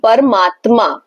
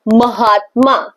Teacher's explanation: तो अ and आ is equals to आ, परम आत्मा, सी परमात्मा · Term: स्वर संधि